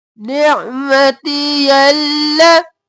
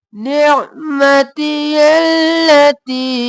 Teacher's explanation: अब यल और ला, निअमती यल, और फिर ती को तीन अलिफ के बराबर खींचेंगे